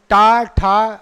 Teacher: वो पीछे जा रही जिह्वा, जिह्वा एकदम मुड़ जाती है